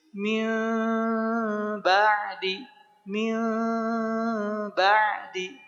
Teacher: Bagaimana cara menyamarkan bunyi m-nya? Adalah dengan dibuka si bibir kita sedikit, ya. Ya kira-kira selebar sehelai kertas lah. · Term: iqlab